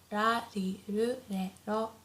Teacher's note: the R sound is not as harsh as in English, so it's not like r, not like R, but it's very soft in between L and R.